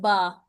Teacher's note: यह बा आपको सामने नजर आ रहे होठ यह जो लिप्स बने हुए हैं यहां से अदा होगा